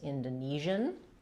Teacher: In an American English, we don't say this as zien, we tend to just say jeun, so we use the zh sound. So stresses on the ni syllable, clear vowel there